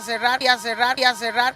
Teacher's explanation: Here's what I was referring to earlier in the video where the double R sound in the middle of a word turns into a traditional English R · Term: semi-English R